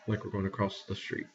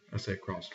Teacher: I say across with a T on the end.